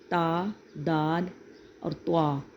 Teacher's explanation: نوک زبان جب اندرونی دانتوں کی جڑوں کو لگتی ہے تو یہ حروف ادا ہوتے ہیں